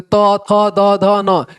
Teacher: ये जितना भी है ना वो दांत की हेल्प से बोला जाता है